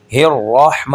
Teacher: را کو موٹا کریں گے، لپس گول نہیں کرنے